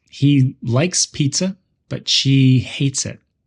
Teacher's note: In the sentence, he likes pizza, but she hates it. We stress likes and hates to show different opinions.